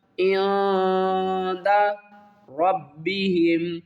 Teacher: نون ساکن کے بعد دال آ رہا ہے حروف اخفا میں سے، یہاں پر ہم اخفا کریں گے، یعنی آواز کو چھپا کر پڑھیں گے